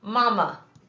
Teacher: in this word the first a stands for the schwa sound ma the second a stands for uh two different sounds of